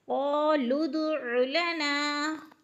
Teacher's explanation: قالوا ادع لنا، قالوا قاف موٹے حروف میں سے ہے، لام کو دال کے ساتھ ملا کر پڑھنے ہیں اور قلقلہ کرنا ہے